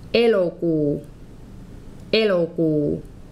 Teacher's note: This is /e.lo.kuː/. That middle sound is an /o/. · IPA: /'elokuː/